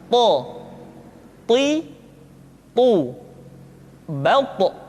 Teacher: To diucapkan dengan menyentuhkan ujung lidah dengan gusi-gusi dua gigi seri bagian atas. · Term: huruf to